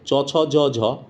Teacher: জীব যখন তালুতে ঠেকে, চ, ছ, জ, ঝ, তখন তালব্য বর্ণ বলে